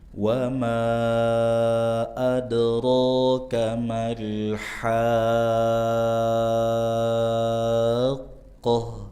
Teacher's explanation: Ada dua mad yang dibaca panjang. Wama dengan haqqo. Dan haqqo lebih panjang itu en harakat.